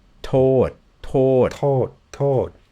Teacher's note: i can hear your tongue still lateral and it's on your teeth